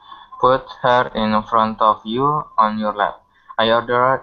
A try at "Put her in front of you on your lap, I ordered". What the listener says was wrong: you gotta say it like you're ordering. You gotta say it like you're the doctor. Put her in front of you on your lap, I ordered. With conviction.